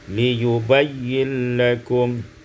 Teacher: Pada ayat yang ke-26, liyubayyina lakum, idghamun nun fil lam, diidghamkan nun pada lam menjadi liyubayyin lakum.